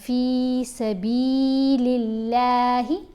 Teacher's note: اللہ کی لام کو یہاں پر باریک پڑھیں گے کیونکہ دیکھیں اللہ کی یہ جو درمیان والی لام ہے اس کے پڑھنے کا اصول ہے کہ کچھ جگہوں پر یہ موٹی پڑھی جائے گی، کچھ جگہوں پر اس کو باریک پڑھتے ہیں۔